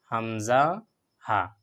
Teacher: শেষ ভাগ দুই নম্বর যে মাখরাজ এটা হলো গলার শেষ ভাগ গলার শেষ ভাগ থেকে আমাদেরকে আদায় করতে হয় এটা হলো হামজা এবং হা